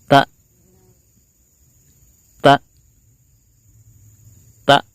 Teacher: suaranya betul-betul tertahan, tidak ada sisa sama sekali, ditandai dengan pita suara kita yang menutup ya, tidak ada aliran suara lagi. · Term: huruf hamzah